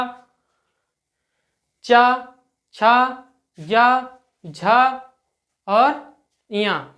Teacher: जैसे आप च बोलेंगे तो आपकी जीभ जो है वो दांतों के ऊपर थोड़े जगह को टच करेगी। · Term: तालु